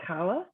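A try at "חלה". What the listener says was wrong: Oh, I would not say it's a hard CH. It's a guttural. Yeah,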